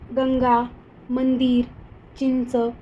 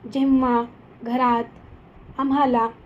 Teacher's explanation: अनुस्वाराचा उच्चार आपण स्पष्ट आणि खणखणीत करतो, तर अनुनासिकाचा उच्चार आपण ओझरता किंवा नाकातून करतो.